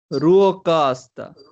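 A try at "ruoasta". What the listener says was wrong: Yeah, but now get rid of the K. K goes away. K menee pois. There is K and it goes away.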